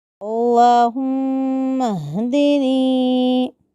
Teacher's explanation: اللہم میں اللہ کے لام کو پر کرنا ہے، میم مشددہ کو گنہ کرنا ہے، ہا کو قلقلہ کیے بغیر پڑھنا ہے، آخری میں نون یا زیر نی یا مدہ کو ذہن میں رکھنا ہے۔